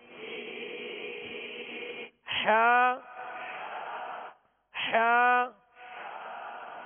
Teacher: حلق سے، وسط حلق سے ادا کریں گے، درمیانی حلق سے